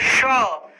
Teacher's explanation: तालव्य स का उच्चारण तालु से होता है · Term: तालव्य श